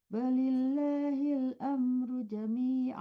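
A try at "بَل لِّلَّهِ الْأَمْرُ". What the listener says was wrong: Balil tasdidnya pandai balil. Bukan lagi tuh, bukan balil ya, tapi balil lah tasdidnya ada dua.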